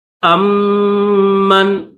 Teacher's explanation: میم کے اوپر تشدید ہے تو میم کے ساتھ ملا کر غنہ کریں گے